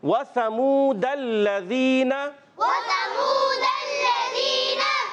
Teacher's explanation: سا زال اور ضا یہ ایسے حروف ہیں جو زبان کے سرے اور سامنے کے دانتوں کے کناروں سے ادا ہوتے ہیں